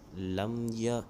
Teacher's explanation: آگے لفظ ہے لام میم زبر لم۔ اب یہاں پر میم ساکن کے بعد یا گیا تو یہاں پر اظہار شفوی ہوگا، یعنی غنہ نہیں کریں گے